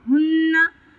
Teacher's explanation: नून मुशद्दद है, एक अलिफ बराबर गुन्ना करेंगे।